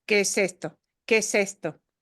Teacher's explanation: Que ends in an E, and the next word starts with an E, so it's just going to prolong that E sound.